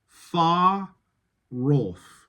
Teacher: you could do a linking R.